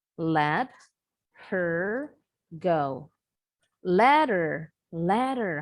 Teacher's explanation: kalau dalam percakapan sehari-hari nih penutur asli Bahasa Inggris suka membuang sering membuang bunyi H